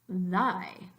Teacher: The only difference is the sound th in thigh, which doesn't vibrate your vocal cords, and the sound th as in thy, which does let your vocal cords vibrate.